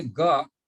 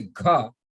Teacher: when you say ga, you release less air. But when you say gha, all of a sudden you say gha, you release a lot of air.